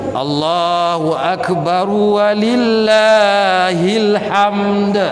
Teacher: Dal tu isbat dan dia huruf qalqalah. Dia kena bunyi. Kalau tak bunyi pun tak apalah, janji jangan panjang.